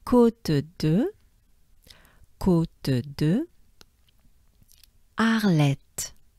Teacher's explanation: notice we don't pronounce the H. It starts with the A sound.